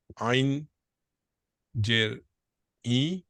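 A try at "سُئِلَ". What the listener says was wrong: হ্যাঁ, এটাকে আমরা আইন না বলে হামজা বলি। সুইলা।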